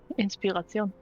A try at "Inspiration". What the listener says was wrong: It sounded more French than German.